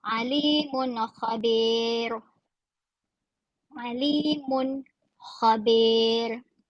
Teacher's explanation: Mun khabir tidak dengung. Jelas sebutannya mun khabir. Tanwin atau bunyi nun secara jelas dan kha.